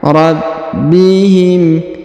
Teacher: Huruf ba berharokat tasdid, maka ditahan dan ditekan · Huruf nun sukun bertemu dengan sa di sini, perhatikan, atau si, maka didengungkan dan disamarkan